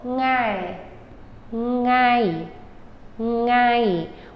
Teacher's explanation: the problem comes with this NG. We're not used to saying it at the beginning of a word.